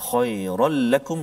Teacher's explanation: Saya nak fokuskan pada kalimah khairul lakum, iaitu tanwin bertemu dengan lam, tanwin bertemu dengan lam idgham bila gunnah. Maksudnya masukkan bunyi tanwin ke dalam lam itu tanpa didengungkan